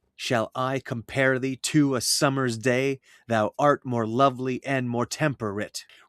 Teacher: Its unstressed, stressed beat is meant to mimic the human heartbeat.